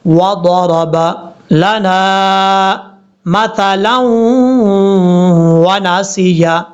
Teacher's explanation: ضاد فل موت پڑھا جائے گا کیونکہ حروف مستعلیہ میں سے ہے. را کے اوپر جب بھی زبر ہو تو را بھی پر پڑھا جاتا ہے.